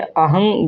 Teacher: तो अनुस्वार का उच्चारण केवल नाक से होता है।